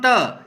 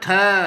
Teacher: और एग्जाम्पल के लिए जैसे हम त वर्ग ले लेते हैं, तो प्रथम त जल्दी से हवा निकल गई, लेकिन आप बोलोगे थ तो देर में जा रही है वह